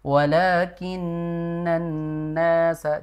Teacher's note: harusnya dipanjangkan walakinanasa jadi bukan walakin tadi kan terbaca pendek ya harusnya panjang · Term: lamnya panjang